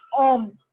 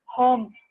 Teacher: when H is mute, you can consider it as a vowel because I pronounce it as homme, not home.